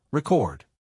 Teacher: For example, in the word record, the noun is stressed on the first syllable are e chord while the verb is stressed on the second syllable